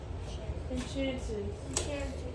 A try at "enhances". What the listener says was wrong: Look at it closely. There is no CH, right?